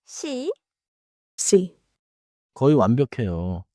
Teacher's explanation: Now, the soft one. Si. Si. Just a touch softer. Don't push air.